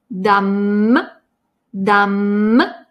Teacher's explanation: Это «м», который смыкается и размыкается